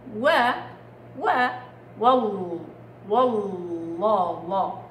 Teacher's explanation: هذه اللامات فخمت ليه؟ لانه سبقت بواو مفتوحه فصارت و والله